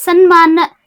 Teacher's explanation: ವ್ಯಂಜನಾಕ್ಷರ ತ ವರ್ಗ ಐತಿ ತ ವ್ಯಂಜನಾಕ್ಷರ ಐತಿ ಸತ್ ಪ್ಲಸ್ ಮಾನ ಸನ್ಮಾನ ಸಂಧಿ ಕ್ರಿಯಾ ಆದವಾಗ ಅದ ವರ್ಗದ ಅನುನಾಸಿಕ ಸ್ವರ ಯಾವುದು ಬಂದತಿ ನ ಬಂದತಿ